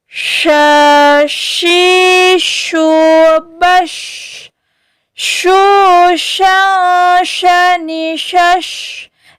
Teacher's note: Shin ini mesti tafasis. Mesti banyak anginnya. Sya sama kalau kita lagi menggusyah ayam.